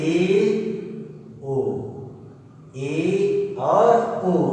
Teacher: और जो तीसरा भेद है अर्ध संवृत्त, हाफ क्लोज, मतलब आधा बंद होगा केवल। जिन स्वरों का उच्चारण करते समय मतलब जो मुख का द्वार है केवल आधा बंद हो, उसे अर्ध संवृत्त स्वर कहते हैं।